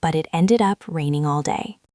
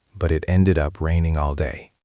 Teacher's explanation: You want to drop your pitch a little to show this appointment. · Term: intonation